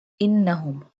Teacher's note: Noon have tashdid and pink color, so we do gunna here, means your voice comes from nose.